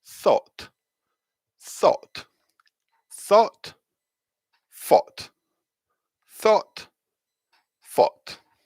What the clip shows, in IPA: θɔːt